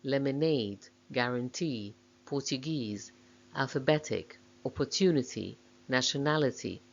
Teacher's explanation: Words stressed on the third syllable